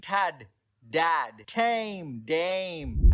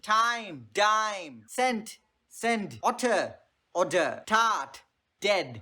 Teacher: You use the tip of your tongue on the teeth ridge.